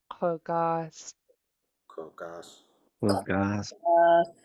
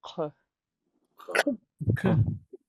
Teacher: the back of your tongue is hitting the back of your throat to make that closing sound. >> And then the the s of the apostrophe, the pinched s is going to sound sharper. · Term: underline K